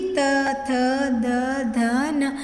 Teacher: जब हम उच्चारण करते हैं तो हमारी जीभ है जो दांतों को स्पर्श करती है, तो ये इनका उच्चारण स्थान है दांत।